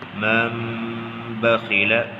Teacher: نون ساکن کے بعد با آ گیا ہے تو یہاں پر نون کو میم سے بدل دیا جائے گا تو پڑھا جائے گا من بخیل۔